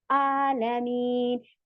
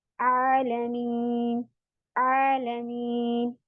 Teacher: जबकि हमने वहां पर आइन है, तो हमने आइन की आवाज निकालनी है, और आइन की आवाज आपकी स्क्वीजिंग होगी, निचोड़ वाली होगी